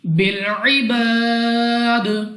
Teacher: الف سے پہلے زبر الف مدہ, مگر وقف میں دال کو کر دیں گے ساکن, اور اس الف مدہ کو مد عارض کے ساتھ بدل کر 3 4 یا 5 سیکنڈ تک کھینچ کر پڑھنا ہوگا. اور وقف میں جب ہم دال کو ساکن کریں گے تو یہاں پر ہم نے قلقلہ کرنا ہے.